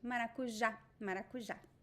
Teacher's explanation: right the acute accent that accent makes the vow very strong so this word is stressed at the end